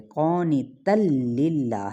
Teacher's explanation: یہاں پر ہم نے ادغام بلا غنہ کرنا ہے، غنہ نہیں کریں گے۔ قانتا للہ یہ نہیں پڑھنا کہ قانتا للہ، یہ غلط ہوگا۔